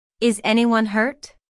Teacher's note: this is a yes no question so the intonation Rises at the end